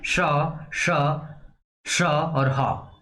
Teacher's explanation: संघर्ष के साथ वायु बाहर निकल रही है